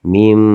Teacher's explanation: Apabila ada nun sukun bertemu dengan huruf ba dan ini sudah dibantu dengan ada huruf mim kecil. Jadi cara bacaan ini meleburkan huruf nun ini diganti dengan huruf mim. Jadi tidak baca min bani tapi mim ya, mim. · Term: iklab